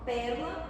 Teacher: o primeiro E da palavra aqui é um E mais acentuado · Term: E como tônica